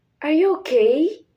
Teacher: It's the voice rise at the end like use for yes or no question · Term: rising intonation